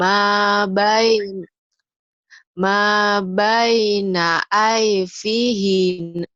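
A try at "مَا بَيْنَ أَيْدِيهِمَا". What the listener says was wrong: ID bukan IP. Iya, di. Ih-nya pendek.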